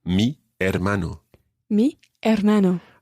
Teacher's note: although it starts with an h you don't pronounce the h the h is always always silent in spanish in every single